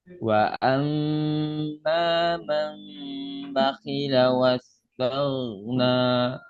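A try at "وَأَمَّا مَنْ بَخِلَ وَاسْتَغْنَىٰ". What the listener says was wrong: Nah, masih mundur itu. Iya, iya, beda suaranya. Jadi kalau nggak percaya di rumah nanti dicermin ya, dibaca ayat 8 ini. Nah, di sini ujung-ujung ini masih ketarik ke belakang. Sehingga suaranya masih ya cenderung menipis.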